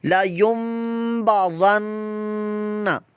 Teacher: ہماری زبان جو ہے نون کے مخرج پر 1 الف 2 حرکات تک لگی رہے گی اور ناک کے اندر ہماری آواز چلی جائے گی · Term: غنہ